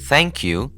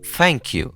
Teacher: in british english they change the th with f